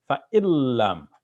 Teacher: So instead of saying fa'in lam, we're going to say fa'illam, as if the lam is doubled there